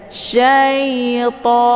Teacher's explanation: To dibaca panjang 2 kali ketukan atau 2 harokat. Ini dinamakan dengan mad tabi'i muqaddar karena ada harokat fathah tegak di atas huruf ta.